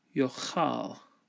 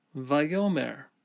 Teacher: the aleph in the peh position quiesces, and the vowel lengthens to a holum